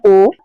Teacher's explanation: ओ और औ का हम लोग उच्चारण कर रहे हैं तो कंठ और ओस्ट यानी कंठ का भी यूज हो रहा है और ओस्ट का यानी होट का भी यूज हो रहा है